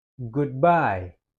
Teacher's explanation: Dia lebih tekankan di bye-nya.